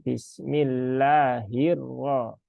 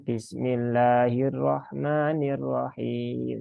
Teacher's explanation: Dan ini roknya bertasdid semua ya. Banyak yang ketika membaca basmalah ini tasdidnya hilang. Jadi perlu ditekankan Bismillahirrahmanirrahim ya.